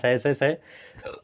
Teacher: गर्म आवाज निकल रही है तो इसे उष्म कहा जाता है